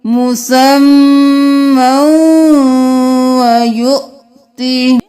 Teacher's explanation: سورۃ الہود کی آیت نمبر 3 میں دیکھ لیجئے، یمتعکم متاعا اجل مسمى ویؤتی، یہاں پر میم دو زبر کے ساتھ واو کو ملائیں گے، یا کو نہیں پڑھیں گے